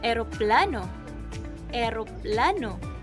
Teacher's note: dila ay nasa harap ng bibig, bahagyang nakataas at ang labi ay nakangiti.